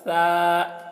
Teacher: یہ ثا ہے تو باریکی کے ساتھ، ثا، سا نہیں بولنا ہے